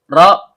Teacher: ujung lidah bertemu dengan langit-langit bagian belakang. Karena kita berwakaf pada huruf ro, maka ro-nya disukunkan dan kita lihat huruf sebelumnya berharakat fathah, maka hukum bacaannya tebal atau tabhim.